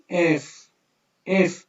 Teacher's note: একদম উপরের দাঁতটা নিচের হচ্ছে ঠোঁটের সাথে ঠেকবে